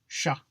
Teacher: Not too shabby. It's pronounced like a sh, but with the tongue a little further back in the mouth.